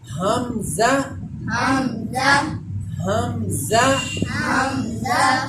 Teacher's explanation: جو حلق کا، گلے کا سب سے نچلا حصہ ہے سینے کی طرف، وہاں سے یہ حرف حمزہ ادا ہوتا ہے